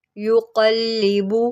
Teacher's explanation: क़ाफ़ को मोटा करें, युक़ल्लिबु